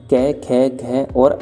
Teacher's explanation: जो कै वर्ग होता है इसे कंठ के द्वारा बोला जाता है